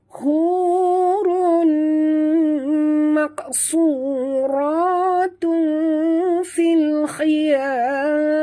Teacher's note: Hu di sini ha pedas ya sahabat. Jangan tertebalkan, dia ringan saja.